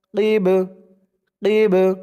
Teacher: বাটা কলকলার হরফ হয়ে গেছে, ধাক্কা দিয়ে পড়তে হবে।